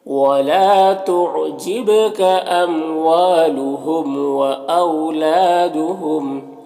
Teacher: لا میں الف مدہ ہے، ایک الف کے برابر کھینچ کر پڑھیں گے